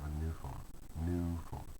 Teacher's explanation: But we stress both words in a normal adjective plus a noun phrase, such as a new phone, because they're both necessary. Okay, they're not a compound.